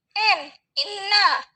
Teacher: Fonem N itu cara artikulasinya nasal atau sengau. Lalu tempat artikulasinya di alveolar. Alveolar itu belakang gigi atau punggung gigi.